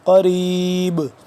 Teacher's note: قریب آخر میں قلقلہ کریں گے کیونکہ با ساکن ہو گیا